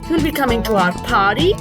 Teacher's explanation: at the end i've used a rising tone this makes it a question